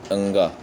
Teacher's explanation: अंगा के उच्चारण जो है कंठ और नासिका दोनों की मदद ली जाती है, क्योंकि ये का वर्ग के अंतर्गत आता है। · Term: नासिक के व्यंजन